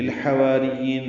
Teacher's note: للحواریین لام ساکن پہ اظہار حا وسط حلق سے ادا ہوگا